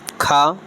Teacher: खा का उच्चारण कंठ से होता है